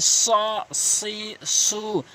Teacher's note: জিহ্বার আগা উভয় দাঁতের আগা থেকে উচ্চারণ হয় স সি সু এবং এক আলিফ টেনে পড়বেন।